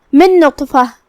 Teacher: من نطفہ کلمت نطفہ میں یہاں حرف الطا ہے. طا حروف التفخیم میں سے ہے تو ہمیں اسے منہ پھلا کے بھاری آواز میں پڑھنا ہے. جو کہ اس پہ جزم ہے تو یہاں طا کا حکم ہے قلقلہ.